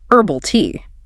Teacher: if you are aiming for a British English accent, the H is strongly spoken.